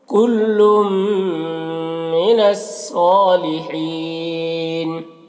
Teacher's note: صاد کو پر پڑھیں گے، حروف مستعلیہ میں سے، کھڑا زبر ہے، ایک الف کے برابر کھینچیں گے، اور یہاں پر وقف کی صورت میں مد عارض وقفی ہوگا، تو اس طرح سے پڑھیں گے۔